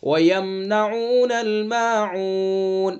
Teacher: وَيَم میم ساکن کا اظہار، اظہار شفوی. میم ساکن کے بعد نون ہے اس لیے میم ساکن کا اظہار ہوگا. اور ماعون وہی مد عارض وقفی، اور دوسرا وقف بالاسکان.